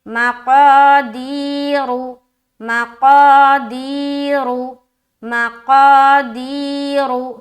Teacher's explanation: رو را کے اوپر پیش کی حرکت ہے، پیش کو جلدی پڑھیں، تھوڑا بھی نہ کھینچے، معروف پڑھیں، مجہول آواز سے بچیں